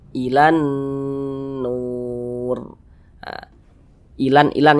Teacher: ini hukumnya ghunah musyaddadah karena dia gunah berarti digunahkan digunahkan tuh didengungkan jadi suaranya itu kita tahan kemudian kita panjangkan sejenak